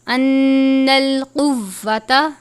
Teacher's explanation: نون مشدد ہے، تھوڑا سختی سے پڑھتے ہیں تشدید کی علامت ہو تو، اور غنہ بھی کرتے ہیں